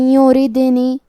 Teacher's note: ہم حرف الرا کو پتلی آواز میں پڑھیں گے · ادغام کا معنی ہے حرف کو حرف میں داخل کرنا، تو ہم نون ساکن کو یا میں ملا کے غنہ اور تشدید کے ساتھ یہ حکم کو ادا کریں گے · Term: ترقیق, ادغام بغنہ